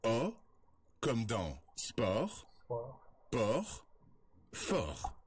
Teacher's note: On l'appelle le O ouvert. Pour prononcer ce son, on ouvre davantage la bouche que pour le O fermé.